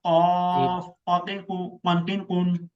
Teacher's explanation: সামনের উপরের দাঁত নিচের ঠোঁটের পেট দাঁত, চালু নিচের ঠোঁটের পেট, বাতাস চালু, ফিন ফুন ফাফি ফু ফানফিন ফুন। নাম্বার 2, জিহ্বার গোড়া তার বরাবর উপরে তালুর সঙ্গে লাগাইয়া